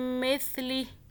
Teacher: سا کو سافٹ پڑھیں، زبان کو باہر کریں، پھر ادا ہو جائے گا